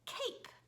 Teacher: our K sound is made in the back of our throat